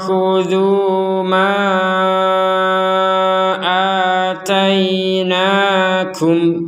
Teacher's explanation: Jadi ma dibaca panjang ketika digabung dengan hamzah. Ma dibaca lebih pendek, bukan dibaca pendek, dibaca lebih pendek, yaitu 2 harokat ketika kita berhenti di sini. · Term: harokat bendera